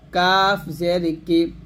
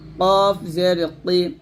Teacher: দেখুন কাফ জের কি হয় পাতলা, কফ জের কি মোটা, তা জের তি পাতলা, ত জের তই মোটা